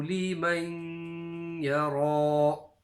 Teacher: At the end there with the ya, idgham with a gunna.